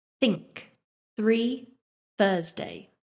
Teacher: Each time my tongue is lightly going between my teeth and I'm blowing out the air to make the sound. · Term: voiceless th sound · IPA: /θ/